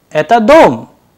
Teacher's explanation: in the end the sound is rising, which is actually making it into a interrogative sentence